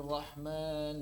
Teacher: huruf ro meskipun disifati dengan takrir namun getarannya mesti disembunyikan saat bertasydid. Bukan benar-benar ditampakkan.